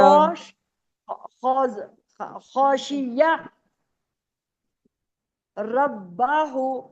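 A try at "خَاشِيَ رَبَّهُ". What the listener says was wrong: रब्बा नहीं, रब्बा, वक्फ करना है ना। रब्बा नहीं है, रॉ को मोटा पढ़ने है, रब्बा।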